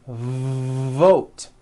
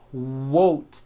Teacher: depending on your native language, you may be replacing your V sounds for W sounds.